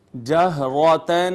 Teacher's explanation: ہا حروف حلقی میں سے ہے اور اس کا مخرج اقصی حلق ہے، لہٰذا اس کو تھوڑا سا پر کر کے پڑھتے ہیں۔ اس کے بعد نون تنوین پر ہم نے کیا اخفا، صاد پھر حروف مستعلیہ میں سے پر کر کے پڑھیں گے، قاف کو بھی پر کر کے پڑھیں گے۔